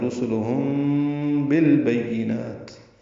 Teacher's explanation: کی وجہ سے اخفاء شفوی ہوا ہے، رسلہم بالبینات، میم اور با کا اخفاء کریں گے آپس میں ملاتے ہوئے